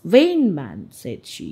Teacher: It's called a spondee, where we give beat on both words.